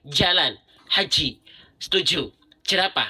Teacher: huruf jim itu keluar dari tengah lidah disentuhkan dengan langit-langit bagian tengah